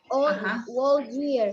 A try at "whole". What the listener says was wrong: No, the W is a silent letter. whole.